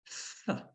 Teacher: It's his friend. And the tongue has moved forward onto the teeth